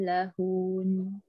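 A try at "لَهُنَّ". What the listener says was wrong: Ah, jangan panjangkan lahun, dipanjangkan dengan nun. Ah, lahun.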